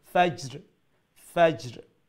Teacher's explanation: Jim is a qalqala letter, same as dal is a qalqala letter. So we'll have an echoing sound, the qalqala, but make sure that it does not turn into a haraka, a fatha, or dhamma, or kasra.